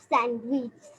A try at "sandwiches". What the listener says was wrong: স্যান্ডউইচেস নাও, স্যান্ডউইচেস দা ইএস এর উচ্চারণ চেস না, আই এর মতো উচ্চারণ শিখিয়েছিলাম। স্যান্ডউইচেস, স্যান্ডউইচেস এই যে এরকম শিখিয়েছিলাম, এরকম আই জেড, মনে আছে সেটা? I Z, স্যান্ডউইচেস।